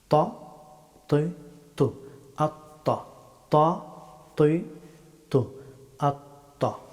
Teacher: ত হরফটি উচ্চারিত হয় জিহ্বার অগ্রভাগ এবং সানায়া উলিয়া এই দুই দাঁতের মাড়ি